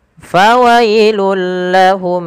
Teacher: Fawailul lahum sama dengan fawailul lilladzi, yaitu suara lamnya langsung dimasukkan ke huruf, suara tanwin yang langsung dimasukkan ke huruf lam karena ia idgham bila gunnah